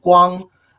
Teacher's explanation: first tone is you keep your um intonation high in level